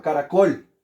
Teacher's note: la sílaba tónica de caracol es la última